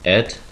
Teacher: Cockney is famous for dropping the H sounds at the beginning of a word. For example, head changed into ed.